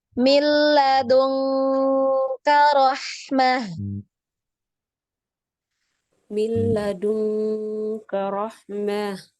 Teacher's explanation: Nun ketemu K, NG ya, NG banget bunyinya NG.